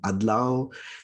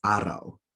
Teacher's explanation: The D consonant is more common down south, while the R consonant is more common up north, or just generally the Tagalog region.